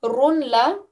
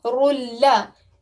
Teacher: we know if there is a lam or ra mushaddad afterwards, then we know that we have to give no nasal sound at all